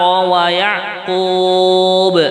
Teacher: Kalau waqaf pada wa Yaqub, di sini dibaca qalqalah ya